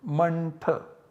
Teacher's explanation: the nasal savarna of th is n, so the output generated is mantha